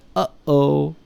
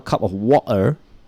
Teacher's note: In normal English, you have uh-oh, or in Manchester accent, when you want to have a cup of water, that's the glottal stop.